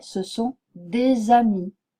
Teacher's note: mot qui commence par une voyelle ou un H je pron je prononcerai ce S et ce S sera sonore · je prononcerai ce S et ce S sera sonore. Je dirai ce sont des amis. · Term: liaison